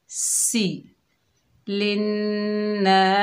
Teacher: सीन सीटी वाला हरूफ है, सख्ती और सीटी वाला हरूफ, इसे सीटी से अदा करेंगे।